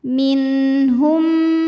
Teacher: hukum idamimi sebab ada mim sukun menghadapi mim berharakat cara bacanya mim pertama dileburkan ke mim kedua disertai bunyi dengung m bunyi m-nya tahan